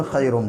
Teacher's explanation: या साकिन से पहले खा के ऊपर ज़बर, इसलिए या लीन होगा और इसको थोड़ा सा खींचेंगे